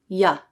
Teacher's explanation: Palatal means the tongue goes to the middle part of the roof of the mouth when you make this sound. English has 1 palatal sound, y.